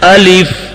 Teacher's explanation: الف, الف بھی نہیں پڑھنا, الف لام کے بعد یا بھی پیدا نہیں کرنا, اور فا کو پا بھی نہیں پڑھنا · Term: حمزہ سخت